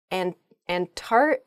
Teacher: when you're saying this word quickly you might leave out that first c in the antarctic